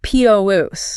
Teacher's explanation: >> Well, when you are talking about the physical section of the store with the apples and the lettuce, the noun, the stress is heavily weighted on the first syllable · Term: noun-verb stress shift